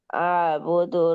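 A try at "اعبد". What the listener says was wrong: আবুদ না তো, এই উবুদ।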